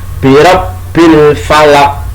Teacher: qafnya itu qalqalah kubro, harus ada pantulan